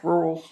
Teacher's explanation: You hear my Kentucky won't let me pronounce that second R, rural. But it's like, what was that about?